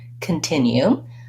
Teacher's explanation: continue has three syllables and it has second syllable stress we can see that here with this little line before the